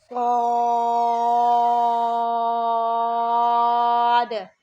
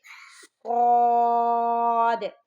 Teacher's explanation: صاد یہ ہم سیٹی کی آواز میں پڑھیں گے اور موٹا بھی پڑھیں گے، صاد۔ اچھا، اس کو سواد نہیں پڑھنا آپ نے، ٹھیک ہے۔